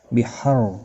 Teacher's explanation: را ساکن سے پہلے زبر ہے، پر پڑھا جائے گا